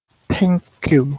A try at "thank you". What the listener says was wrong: Not thank you, it's not T sound, it's thank you, thank you. You have to pull your tongue out. You have to stick your tongue out like this. Thank you.